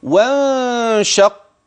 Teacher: النون التي أخفيت مع وجود غنة لوجود الشين بعد النون الساكنة